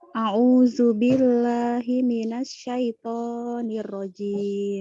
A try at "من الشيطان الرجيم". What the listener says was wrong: Minasyaitonir rajim. Mubasharatan بدون زيادة في الألف. ألف طبيعي. من الشيطان الرجيم. من الشيطان الرجيم.